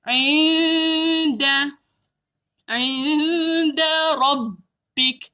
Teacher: Sembunyi. Sembunyi, jangan sebut nun tepat pada makhraj. Jadi hujung lidah tak boleh sentuh langit-langit atas. Hujung lidah tergantung. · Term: ikhfa hakiki